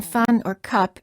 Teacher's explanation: a neutral vowel meaning that everything in your mouth is relaxed and the lips are just very slightly open the A and the a sounds in contrast to the uh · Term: uh sound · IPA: /ə/